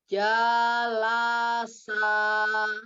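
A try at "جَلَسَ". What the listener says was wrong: Ya, pendekkan lagi janya.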